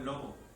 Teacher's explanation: moverse mucho los labios no debe de pegar con los dientes Porque no es labiodental y es fricativa